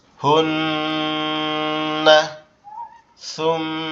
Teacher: মাশাআল্লাহ, গুন্নাটা আরেকটু বেশি হবে।